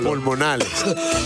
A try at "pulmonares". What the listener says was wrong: No, pulmonales no. Pulmonares.